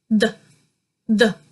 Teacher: This is common at the beginning of lots of words, and to form this, you'll form it pretty similar to the one we've just mentioned. But when your tongue comes out, it kind of hits the top row of your teeth rather than protruding out more from your mouth